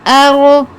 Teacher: رو پر تفخیم کرنی ہے، منہ کو گول کر کے پر پڑھنا ہے